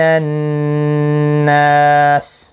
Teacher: نا الف مدہ ہے، ایک الف کی مقدار کے برابر کھینچ کر پڑھیں گے